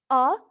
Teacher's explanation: it is low back and unrounded